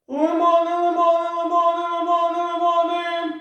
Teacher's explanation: звук змінює забарвлення і стає тоншим здається що верхні ноти дзвенять або резонують в голові У деяких голос відчувається в Маківці У деяких в потилиці в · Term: верхній регістр